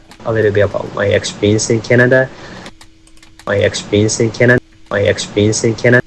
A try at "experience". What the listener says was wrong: Sounds like you deleted the R in experience, and you said experience or something. Yeah, I kind of did peents, expense. Experience, maybe? Experience? Whereas I would do experience.